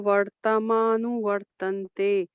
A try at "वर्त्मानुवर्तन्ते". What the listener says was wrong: Not vartamana. It is vartmana. It is together. This ir is for this t and ma also. For both the ir is applicable. So vartmana. Vartmana.